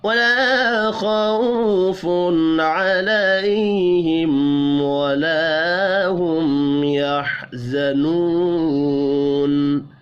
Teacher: تنوین کے بعد عین ہے، اظہار حلقی ہوگا، یہاں پر غنہ نہیں ہوگا